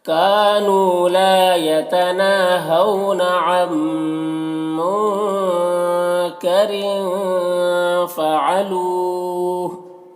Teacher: یہاں پر وقف کریں گے تو ہا کا پیش سکون سے بدل جائے گا، تو پھر مد عارض وقفی ہوگا۔